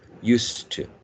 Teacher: when we use the word used followed by to, in general, it should be devoiced. So this z turns into s. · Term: regressive assimilation